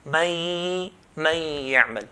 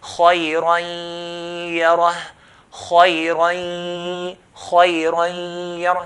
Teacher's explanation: When we pronounce the ya, we have to pronounce it with a nasalization sound that comes from the nose